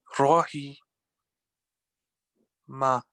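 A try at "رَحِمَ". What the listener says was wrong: Just the ha pronunciation needs a bit of work, so try and say again.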